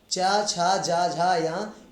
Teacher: इनका उच्चारण स्थान तालु है